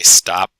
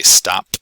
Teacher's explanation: i can say stop where it's not released or i can say stop where i have the bit at the end